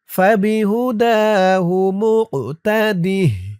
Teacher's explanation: কফটা কলকলার হরফ, ধাক্কা দিতে হবে।